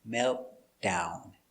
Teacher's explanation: the t is not really pronounced you only hear the d